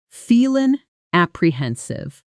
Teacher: Feeling apprehensive often blends together, almost like feelin' apprehensive, with the sounds sliding into each other instead of being cut apart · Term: connect the words